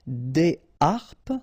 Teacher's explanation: so you don't make the liaison between the two. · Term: H aspiré